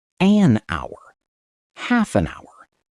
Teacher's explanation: the H is completely silent. We start speaking on the O sound, hour. So we must say an hour, half an hour.